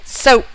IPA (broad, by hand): soʊp